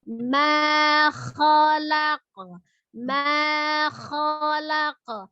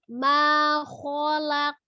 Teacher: kho-nya itu angkat pangkal lidah, tapi bukan dengan memonyongkan bibir. Kholak, tidak.